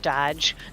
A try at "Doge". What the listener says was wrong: There's only one D in it.